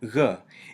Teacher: Without the dagesh it sounds like a softer g (gh), in which the back of the tongue does not fully touch the roof of the mouth the way it would for a g